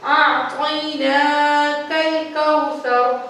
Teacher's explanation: اب جو طا ہے، طا موٹا ہے، موٹے حروف میں سے ہے تو اس کو ہم پر کر کے پڑھیں گے